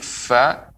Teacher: bibir bagian bawah dalam posisi menempel pada dua gigi seri atas menempel dengan dua gigi seri atas ini dia Bibir bahwa menempel